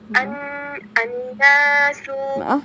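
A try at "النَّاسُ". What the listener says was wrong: Didengung lagi huruf nunnya.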